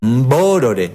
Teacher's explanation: al hispanohablante le cuesta esa pronunciación inicial de las palabras MB Entonces le agrega una e